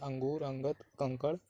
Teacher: ये स्वर के बाद आने वाला व्यंजन है जिसकी ध्वनि नाक से निकलती है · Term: अनुस्वार